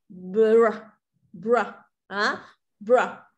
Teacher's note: Mình chỉ cần bật nhẹ một phát là mình chuyển sang r luôn.